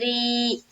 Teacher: ری میں یا مدہ ہوگا اور اس را کو ہم باریک رکھیں گے